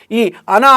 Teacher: ఈ అనా అనేది మూర్ధన్యానునాసికం అవుతుంది